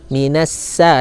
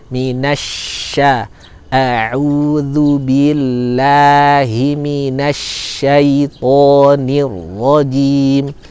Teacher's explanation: Jadi jangan seperti bunyi sin, minasa, ini keliru. Suara desisnya tidak deras, dia seperti suara hujan ya, seperti suara hujan. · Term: Shin